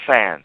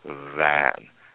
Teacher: if it's not voiced it's fan but once we start vibrating in the larynx and voice it it's van